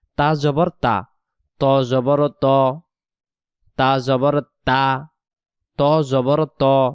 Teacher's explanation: তা অক্ষরকে পাতলা আওয়াজে পড়তে হবে ত অক্ষরকে মোটা আওয়াজে পড়তে হবে